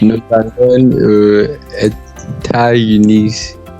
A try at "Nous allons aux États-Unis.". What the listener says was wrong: Okay, the is not unis, is uni. The S is silent.